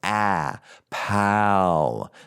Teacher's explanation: it's a long ah a lot more open